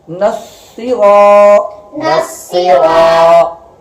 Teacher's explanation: صاد حرف مشدد ہے، اس کے اوپر سختی کرنی ہے کیونکہ یہ حرف مشدد ہے، اس کے اوپر شد ہے.